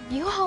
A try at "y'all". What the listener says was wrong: You mean y'all? No, y'all. Y'all. No, you smoosh them together. Y'all.